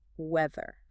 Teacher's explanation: You actually have to bite your tongue a little bit. And then, this is the crucial part, you have to vibrate your vocal cords. It's voiced weather.